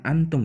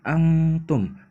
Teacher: Jadi, cara bacanya wala antum. Jadi, dibacanya bukan antum ya, tapi angtum, didengungkan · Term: ikhfa hakiki